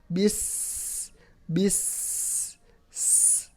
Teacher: Kemudian sifatnya yang pertama, sin adalah mempunyai sifat hamas. Sin yang pertama hamas, ada nafas yang keluar.